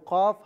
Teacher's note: قاف زبان کی جڑ اور تالو کے نرم حصے سے ادا کیا جائے گا